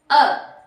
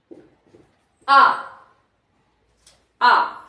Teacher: आ सीधा बोला हमने कोई गोलाकार नहीं हो रहा है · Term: अ वृत्त मुखी